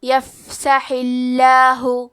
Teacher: آخری میں حا کے نیچے زیر ہے لہذا لفظ الجلالہ کے لام کا حکم ہے ترقیق تو ہمیں حرف اللام کو پتلی آواز میں پڑھنا ہے